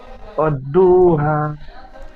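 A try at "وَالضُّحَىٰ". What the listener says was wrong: দু বলে টান দিচ্ছেন, জদ পেশ দু, এই দু একটু টান হয় না পেশ। ওয়াজ্জুহা, ওয়াজ্জুহা। ওয়াদ্দু বললে দাল, আচ্ছা ওয়াদ্দু বললে দাল পেশ দূর মতো উচ্চারণ হয়ে যাচ্ছে। ওয়াজ্জু,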